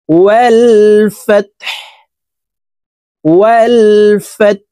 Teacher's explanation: হা পেশ হু, ওয়াল ফাত হু। হাকে ওয়াকফের ক্ষেত্রে সাকিন করে ফেলবো